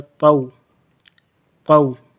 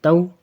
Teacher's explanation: طا کو موٹا پڑھنا ہے اور یہ تا باریک نارمل